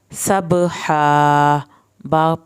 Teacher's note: हा को आपने हल्क से पढ़ना है। सब हा बा पे कलकला होगा।